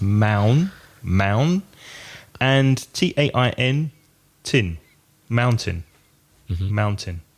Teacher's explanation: The spelling Mountain, but the first vowel sound is ow, like cow or now. So it's mound.